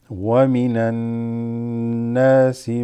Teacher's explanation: We have a noon with a shadda, so that makes it غُنَّة.